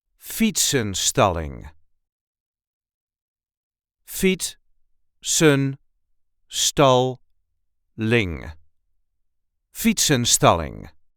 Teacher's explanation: there is a light emphasis on the first syllable